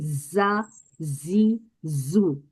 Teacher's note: लेकिन हमें अरबी में ध्यान रखना है, जा में सीटी की आवाज होगी, जा जी जू, क्लियर सीटी की आवाज।